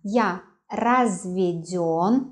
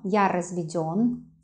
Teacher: the stress on ё